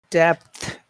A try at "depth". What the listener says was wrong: That's good. Just pause. You have to pause. You can't push those two sounds together. There are 3 parts, and the second part is a pause. Dep, pause, dep. Depth. pausing in the middle. That's the part that you need to do. You need to pause in the middle. 3 parts. Dep, pause.